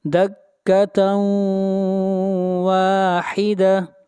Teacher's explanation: جبال فدکتا، تا کو بھی کھینچ کر پڑھیں گے، الف مدہ ہے، دکتا واحدہ، تاؤں، ادغام مع الغنہ، تنوین کے بعد واو ہے اور واو حروف یرملون میں سے ادغام مع الغنہ ہوگا